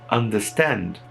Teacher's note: Tem um R ali antes do S e eu não pronuncio ela. Não pronuncio.